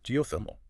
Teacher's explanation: the emphasis is on the third syllable